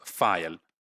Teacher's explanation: the back of the tongue is raised towards the soft palate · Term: dark L